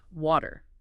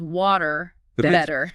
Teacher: But in most American English and often in Canadian English, that T sound when it's between two vowels becomes a soft D sound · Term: flap T